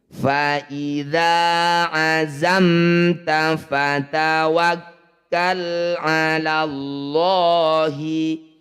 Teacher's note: lafaz Allah didahului fathah disebut lafaz Allah tafkhim atau tebal lanya kita ganti jadi lo mendekati huruf o · sukun bertemu bukan mim bukan ba ini disebut bacaan izhar syafawi cara bacanya bunyi mim sukun baca jelas rapatkan bibir tidak usah dengung